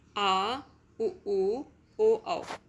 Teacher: जिन स्वरों के उच्चारण में जीभ का पश्च भाग काम करता है उसे पश्च स्वर कहते हैं